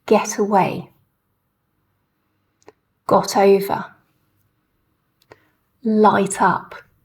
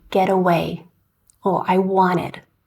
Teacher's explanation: you can see the T sound sounds really clear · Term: true T sound